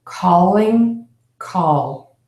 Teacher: l sound okay the lips are going to be open narrowly the tongue is going to be behind the top front teeth it's going to be touching the back of the top front teeth